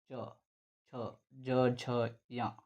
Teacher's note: ಈ ಒಂದು ಚ ವರ್ಗದ ಅಕ್ಷರಗಳು ದವಡೆಯ ಸಹಾಯದಿಂದ ಹುಟ್ಟತಕ್ಕಂತದ್ದು ನೋಡ್ತೀವಿ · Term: ತಾಲವ್ಯ ಅಕ್ಷರಗಳು